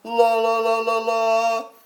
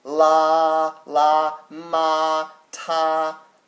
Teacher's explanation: your first tone this bad boy is flat flat all the way across it sounds a little bit like you're singing i think of